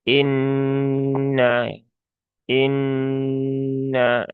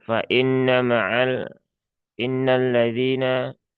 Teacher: Ya, tunaikan ghunahnya dengan sempurna ya. Masukkan rongga hidung kemudian ditahan ya tiga harakat. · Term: gunah musyaddadah